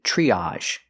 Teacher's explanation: TR R makes the chch sound like chicken plus the r CH tree use the long e like green beans triage again